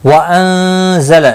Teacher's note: نون ساکن کے بعد حروف اخفا کا زا آیا ہے، اخفا حقیقی ہوگا